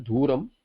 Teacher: I also made another mistake, that mana sambandha duram, it is duram. I may have pronounced it with mahaprana as dhuram